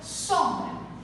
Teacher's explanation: Basicamente, esse M aqui, ele serve para indicar a nasalização da vogal O, certo? Então, quando você vai pronunciar, você acaba não pronunciando o M, porque ele indica apenas a nasalização da vogal